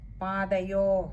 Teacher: പാദയോ അവിടെ ഒകാരം നീട്ടി എടുക്കണം അതേപോലെ വിസർഗ്ഗം ഉള്ളതുകൊണ്ട്തന്നെ പകുതി ഹകാരത്തിൽ വായിക്കുകയും വേണം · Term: ഒകാരം നീട്ടിയെടുക്കണം